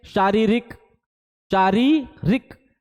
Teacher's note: पहला वाला रा को बड़ा खींचा, दूसरे वाले रा को कम खींचा